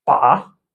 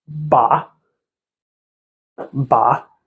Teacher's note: the third tone is this. Really, it's like it's falls a bit and it goes upward, a bit like the English letter V.